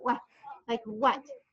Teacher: So a lot of, it has the same sound as just good old W, but it makes that what. There's a little H sound in the very back of your throat.